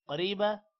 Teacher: قوف کو موٹا کریں گے، رو کے بعد یا ہے، لمبا کریں گے، رو کو موٹا نہیں کرنا